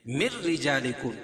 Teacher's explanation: اس لیے کہ نون ساکن کے بعد ادغام بلا غنہ کے دو حرفوں میں سے را ہے، تو یہاں ادغام کریں گے لیکن غنہ نہیں ہوگا. من رجا رائے مشددہ کے نیچے زیر ہو تو را باریک پڑ جاتی ہے.